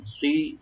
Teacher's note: সোয়াটাকে একটু ডিপ করে আমরা সি বলবো, সি সিন যেন না হয়, রটাকে ডিপ করে একালিফ করে টানবো, এখানে আমরা মধ্যে বাদল হয়ে যাবে সিরাতাম।